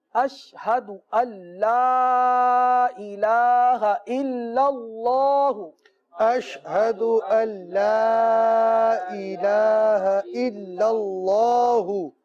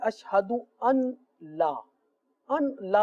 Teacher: پہلے کلمے کے اس حصے پر اشہد اللہ، یہاں بہت ساری غلطیاں کرتے ہیں، بعض پڑھتے ہیں اشہد ان لا، ان لا پڑھتے ہیں، ان لا نہیں پڑھا جائے گا، کیونکہ یہ نون جو ہے لام کے ساتھ ملا کر پڑھیں گے، مدغم کر کے، مل جائے گا